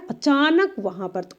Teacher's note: अचानक पे हम ज्यादा बल दिए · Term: बलाघात